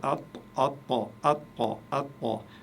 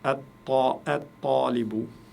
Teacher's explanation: À cause du ta qui arrive juste après, eh bien, le lam ne se prononce plus et ça me donne A, avec le ta. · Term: lettres solaires